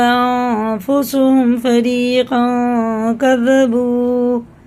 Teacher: یہ اخفا کی مقدار ایک الف کے برابر ہے، ناک میں لے جا کر سائلنٹ کر کے ایک الف کے برابر گنہ کر کے پڑھنا ہے